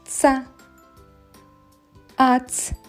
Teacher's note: передня частина язичка спочатку змикається з верхніми зубками а потім утворюється щілина між ними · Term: звук ц